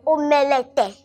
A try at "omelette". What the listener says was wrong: This E is silent. Let's assume there is no E here. So it's pronounced as omelette.